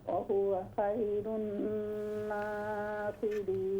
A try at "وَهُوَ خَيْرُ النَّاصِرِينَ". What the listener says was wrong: خا کو درست کریں، وَهُوَ خَيْرُ النَّاصِرِينَ۔